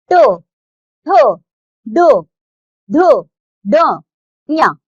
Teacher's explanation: मूर्धा से बोले जाने के कारण इन्हें मूर्धन्य वर्ग कहते हैं।